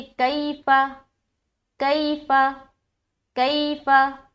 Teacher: यालीन को हम नरमी के साथ जल्द अदा करते हैं, इसमें खींचना नहीं है